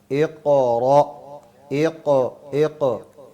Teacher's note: क़ाफ जो है उसको कलकला करना है, लेकिन ज़्यादा भी नहीं